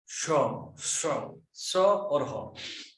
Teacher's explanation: ऐसे व्यंजन जिनके उच्चारण से मुख से उष्मा निकलती है, गर्म वायु, इन्हें उष्म व्यंजन कहते हैं।